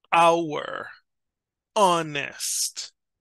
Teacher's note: there are some words that have a silent H, like in Spanish